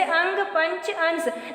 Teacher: अनुस्वार के उच्चारण में नाक से सांस अधिक निकलती है और मुख से कम